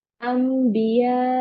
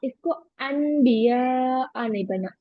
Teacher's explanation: तो जब भी नून साकिन के बाद बा आता है तो नून साकिन या तन्वीन की आवाज को मीम से बदलकर पढ़ेंगे गुन्ना के साथ। This change is generally shown by a teeny मीम above the नून साकिन और तन्वीन।